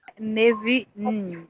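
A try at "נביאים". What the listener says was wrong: Não. Neviim. É o som de M no final. Então, esse im, quando aparecer esse im, já coça a orelha. Coça a orelha, é plural. Neviim. Não tem jeito. Im no final é plural. Neviim. Neviim.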